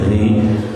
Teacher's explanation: Kalau yang tipis ro-nya kasroh, ri gitu. Ri senyum, itu yang tipis.